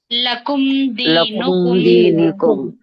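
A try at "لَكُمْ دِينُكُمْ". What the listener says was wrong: ఇక్కడ మీరు ఆగారు కదా, అలా ఆగకూడదు. ఇది ఇలా రావాలి, స్పష్టంగా త్వరగా ఆమె కొంచెం ఆగి చదివారు, అలా ఆగకూడదు. లకుం దీనుకుం.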